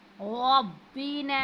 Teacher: रा पर ज़बर है, जब भी रा पर ज़बर होगी उसके ऊपर जो भी हरकत होगी उसको हम पुर पढ़ेंगे